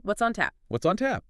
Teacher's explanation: The S in what slides right into the O in on. It sounds like what, son?